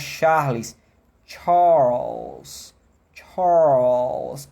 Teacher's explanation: é um R que vai se transformando num l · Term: transitório